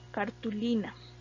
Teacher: esta palabra cartulina tiene el acento precisamente en la penúltima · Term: palabra grave